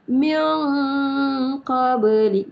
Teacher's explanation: ini adalah qalqalah sugra, lembut sahaja. Sekali lalu je dia cakap macam tu.